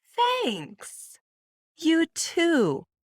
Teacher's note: So you hear my voice going up, "Thanks, you too," with a nice pause in between.